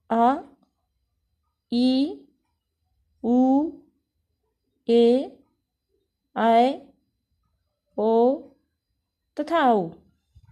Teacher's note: फिर आता है दीर्घ स्वर। दीर्घ स्वर, इनके उच्चारण में ह्रस्व स्वर से दुगुना, यानी इसमें एक मात्रा का समय लगा है तो इसमें 2 मात्रा का समय लगता है। ये संख्या में 7 होते हैं, आ, ई, उ, ए, ऐ, ओ तथा औ।